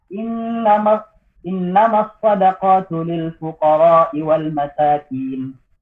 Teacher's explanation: saya tidak membaca gunnah pada innama dan juga tidak memanjangkan mat pada al-fuqara.